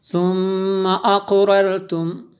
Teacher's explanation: میم شدد ہے اس لیے غنہ ہوا